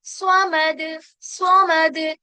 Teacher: سواد کیا کریں گے، موٹا کریں گے، پلس اس پہ تشدید لگی ہے حس، تو زور سے ہمیں اپنے زبان پہ پریشر لگانا ہے.